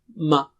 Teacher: میم کا مخرج کیا ہے؟ دو ہونٹ کے ملنے کی جگہ ہے